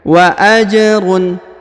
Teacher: huruf ja berharokat sukun, maka dipantulkan ya. Wa ajrun, harokat ya, dibaca jelas ajrun karena tidak ada yang mempengaruhi ya.